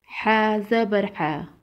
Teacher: حا کو حلق کے درمیان سے ادا کریں گے